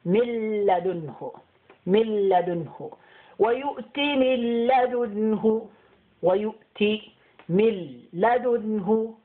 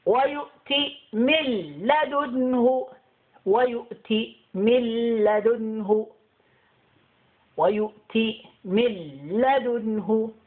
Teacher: the lam will have double sound and we will skip the noon.